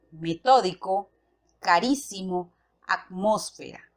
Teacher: La sílaba tónica en estas palabras se encuentran en la antepenúltima sílaba. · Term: esdrújulas